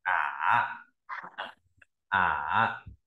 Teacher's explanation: Thanh 3 cái độ cao là 2, 1, 4, đọc ở thấp vừa xuống thấp nhất lên cao vừa